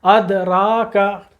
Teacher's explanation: را کے اوپر زبر اس کے ساتھ الف، پورا پڑھنا ہے، مد اصلی ہے را کے ساتھ